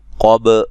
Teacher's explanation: قاف کو موٹا با پہ قلقلہ کرنا ہے، ہلا کے پڑھنا ہے